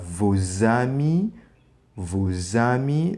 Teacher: The S in liaison becomes Z.